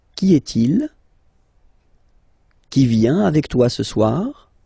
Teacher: If you pronounce them normally, remember that you will have to raise your voice a little bit at the end of the question.